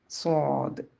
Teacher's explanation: സ്വാദ് ഭാരമുള്ള അക്ഷരമാണ് അപ്പൊ നാവിന്റെ പിറകുവശം ഉയർത്തി വായ നിറച്ച് ഉച്ചരിക്കുക